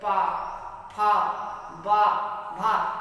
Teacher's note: बिना ओठ को स्पर्श किए वर्ण निकल नहीं सकते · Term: ओष्ठ